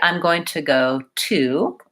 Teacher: For this word to, it's my clear vowel oo.